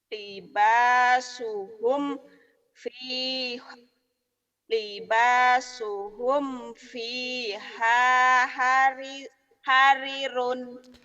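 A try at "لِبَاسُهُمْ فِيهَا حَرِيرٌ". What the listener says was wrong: Rinya panjang teh. Panjang.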